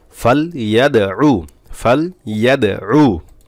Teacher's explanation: দাল কলকলা করতে হবে, ধাক্কা মারতে হবে দালে একটা